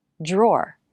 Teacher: pretty hard word we start with the dr consonant cluster der d r can sound like j r